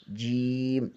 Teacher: وسط زبان بالمقابل اوپر کے تالو سے لگے تو جیم ادا ہوتا ہے